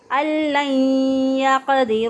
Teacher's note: قاف جو ہے وہ ساکن حالت میں ہے تو اس پہ قلقلہ کریں گے